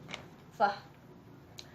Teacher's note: Fah place of articulation labiodental and manner of articulation fricative. Fah include two voiceless.